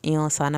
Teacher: انسان پہ غنہ ہو رہا ہے، سین کو سیٹی کی آواز کے ساتھ پڑھیں گے